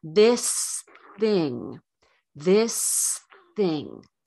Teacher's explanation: people so s plus th same idea one movement not two sustain the s until your tongue is ready to move into position for the th